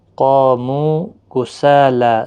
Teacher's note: سا کو بھی کھینچنا ہے، لام کو بھی کھینچنا ہے، ایک الف کے برابر